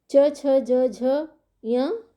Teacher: च छ ज झ य तालु से टकराकर निकलती है